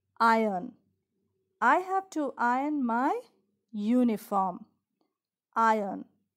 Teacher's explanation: That R sound initially is silent.